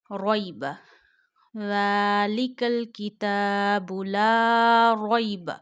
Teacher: But there is another rule, which is ya lean. When zabar come before ya sakina, you read ya sakina without stretching, without sudden pausing the voice.